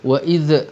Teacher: Kemudian wa idh, ni pun jangan qalqalah sebab ramai orang tak perasan dia qalqalahkan zal. Wa idh, tak ada z sebab zal bukan huruf syiddah